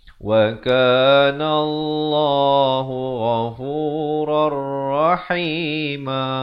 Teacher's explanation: Idgham bila gunnah. Asalnya ghafuran jadi rar. Terus masuk tanpa dengung.